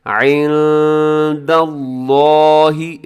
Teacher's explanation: لفظ اللہ کو موٹا پڑے گا کیونکہ لفظ اللہ سے پہلے، لفظ اللہ کے لام سے پہلے دال کے اوپر زبر ہے، تو لفظ اللہ کو موٹا پڑھنا ہے۔ · نون ساکن کے بعد دال ہے، یہاں اخفا کیجئے گا